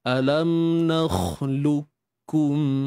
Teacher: Makhraj serta sifat bagi qaf tu dia akan lenyap. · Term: idgham kamil